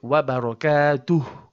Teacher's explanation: And hu here comes from the bottom throat and means his.